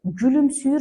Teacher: Baxırıq bu sözün tələffüzündə bütün saitlərimiz üdür, ü saiti də dodaqlanandır, qapalıdır